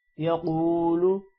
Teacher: قاف موٹا ہوگا اور واو کی وجہ سے قاف واو کے ساتھ مل کر تھوڑا سا لمبا بھی ہوگا